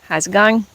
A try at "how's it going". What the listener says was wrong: Yeah, you don't pronounce the G. It's how's it going? How's it going?